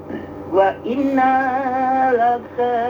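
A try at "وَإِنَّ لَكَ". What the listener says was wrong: Nunnya pendek lagi. Wa inna laka.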